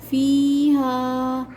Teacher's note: فی کے اندر یا مدہ اور ہا کے اندر الف مدہ ہے تو ان دونوں لفظوں کو کھینچا جائے گا۔